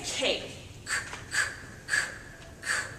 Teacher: if you say k that's where the back of your tongue should be it should be very high a very high arch